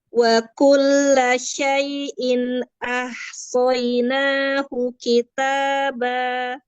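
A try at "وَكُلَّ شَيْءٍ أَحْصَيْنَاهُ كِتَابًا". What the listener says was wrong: Fatnya agak tebalkan sedikit. Saynahu. Ulang.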